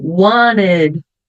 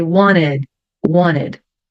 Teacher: Aqui o T vai ficar mudo. Wanted. Eu só puxo do N pro ED.